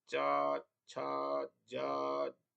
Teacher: इसमें जीवा का अग्र भाग जो है स्पर्श करता है अग्र भाग के स्पर्श से तालव्य वर्णों का उच्चारण किया जाता है · च छ ज झ ञ य और श का उच्चारण तालु स्थान अर्थात दांतों के ऊपर से करना चाहिए